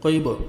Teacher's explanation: क़ैब, क़ाफ को बा के साथ मिलाएंगे, बा हरूफ क़लक़ला है तो डबल साउंड आएगा